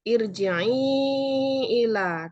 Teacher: huruf ro dibaca tarkik, ir dibaca tipis, mad jaiz karena ada kasroh ya, kasroh sebelum ro sukun.